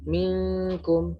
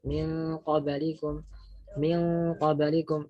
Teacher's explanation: kalau kaf misalnya minkum gitu, itu kan tanpa tafkhim. Sedangkan qaf itu kan tafkhim. Min qablikum misalnya min qablikum itu juga harus ikhfanya itu diidghamkan, begitu, diidghamkan.